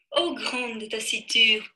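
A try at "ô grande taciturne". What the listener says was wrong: Смотрю я на девушку, вам не буду ее показывать. Рот закрыт. О, grande. Вот надо прям рот открыть. Grande. Да, да, это свобода, нужно открыть рот. Все носовые звуки, на них, наоборот, нужно больше дышать.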